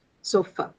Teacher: the last sound is a very feeble, very, you know, short, very unstressed vowel sound